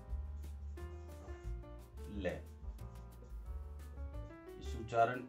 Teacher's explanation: पार्श्व का मतलब बगल, यानी उच्चारण के समय जिह्वा के दोनों तरफ से हवा जो है वो सीधा बाहर निकल जाती है